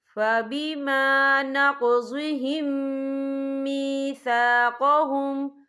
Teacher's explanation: हम पिछले मीम को अगले मीम में मदग़म करेंगे और हम यहाँ गुन्ना भी करेंगे। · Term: इदग़ाम शफ़ी